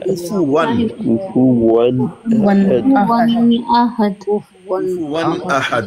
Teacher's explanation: नून साकिन या तनवीन के नून को जाहिर करके पढ़ते हैं देर नहीं लगा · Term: इजहार